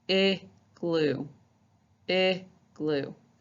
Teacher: when you say that short I, your tongue is in the middle, you're showing off your teeth a little bit